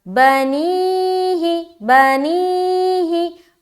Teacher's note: बा को भी जल्द और ही को भी जल्द, बीच में प्रेशर डालना है, बीच में खींचना है, लंबा करना है। स्ट्रेचिंग का काम जो है बीच में होगा। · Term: या मद्दा